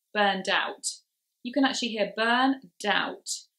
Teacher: burned out you can actually hear burn doubt which can actually sound like a new word the word doubt so it can be confusing so we push